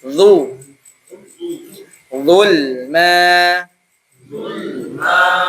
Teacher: D dilla du oke tebal ya. D tebal ee pangkal lidah menyempit.